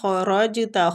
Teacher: خرجت خا کو پور پڑھیں گے، را کو بھی پور پڑھیں گے، زبر کی وجہ سے جیم پہ کلکلا